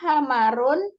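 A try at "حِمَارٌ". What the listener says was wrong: Nah, ini harokatnya haknya bukan fathah yang, tapi kasrah.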